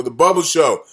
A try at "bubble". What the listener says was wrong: It sounds like you're saying Bubba. Bubble. Well, you said it. It sounded like Bubba.